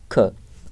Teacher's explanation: ख जो है आपका स्पर्श व्यंजन है, कंठ ध्वनि है, अघोष है और महाप्राण है